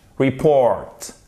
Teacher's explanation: Report. Accent tonique sur la seconde syllabe.